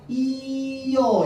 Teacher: 얘도 이 모음 이잖아, 그쵸? 그 다음에 여는 또 뭐야? 반모음 이 플러스 어잖아. 그러니까 이어 이렇게 발음하기가 편한 거야. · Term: 반모음 첨가